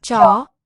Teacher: we start on one pitch and we swing upward as the vowel is being sounded · cha is an upward accent tells us tone rises listen for that cha so we start on one pitch and